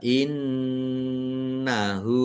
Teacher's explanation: nun tasdid bacaan dhunah. Dibaca mendengung ditahan biar tampak mendengungnya.